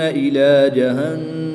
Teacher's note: نون مشدد میں غنہ کریں گے، میم کو وقف کی حالت میں ساکن کر کے پڑھیں گے۔